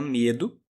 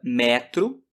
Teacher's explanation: uma oral fechada como na palavra medo uma oral aberto como na palavra neto